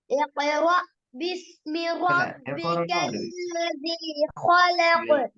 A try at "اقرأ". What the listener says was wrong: பிழை. ஈட சவுண்ட் வராட்டி பிழை. நீங்க இப்பதான் ஈடு சொல்றீங்க, ஓத போக்குல ஈ வருது இல்லையே, எக்கோரா ஓதுறீங்க, எக்கோரா எக்கோரா ஈயா வருது. எக்கோரா எக்கோராண்டு வாய்க்கு வர மாதிரி வயிறு கூடாது.